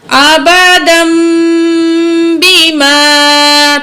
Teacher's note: تو جوڑ تو ہم کریں گے آبادن، لیکن جب ہم روانگی سے پڑھیں گے تو تنوین جو ہے اس کے بعد با ہے، تو ہم تنوین کی آواز کو میم سے بدل کے پڑھیں گے